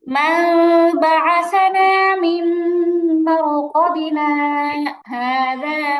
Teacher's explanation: মিম দিয়ে পড়তে হবে এবং দুই ঠোঁটের মাঝখানে সামান্য ফাঁকা রাখতে হবে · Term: ইকলাবের হরফ